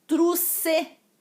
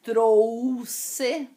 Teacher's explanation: Existe o ditongo, mas as pessoas pronunciam como se não houvesse ditongo, como se fosse uma letra só